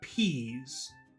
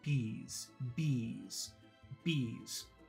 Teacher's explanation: the only difference between the letter P and the letter B is that if you say a p there should be a big explosion of air